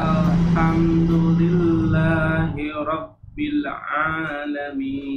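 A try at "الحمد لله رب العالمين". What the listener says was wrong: Masih ada pantulan di huruf alif lam. Ya, rabbil. Rabbil. Rabbil. Tahan.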